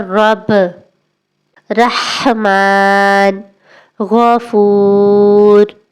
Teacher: مثال کے طور پر رب، رحمان، غفور۔ را پڑھتے وقت زبان اور اوپر کے مسوڑوں کے قریب ہلکے سے لگتی ہے اور تکرار سی محسوس ہوتی ہے، یعنی ہلکی سی رگڑ بھی محسوس ہوتی ہے۔